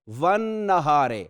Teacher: والنہار لام نہیں پڑھا جا رہا، اس لیے یہ حروف شمسیہ میں سے ہے